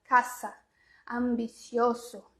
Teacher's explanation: o s não tem som de s tem som de z tá entre vogais então pra gente mais fácil nessa caça ambicioso